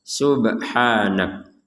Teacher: Subha enggak ada pantulannya. Kalau subha itu harus ada pantulan.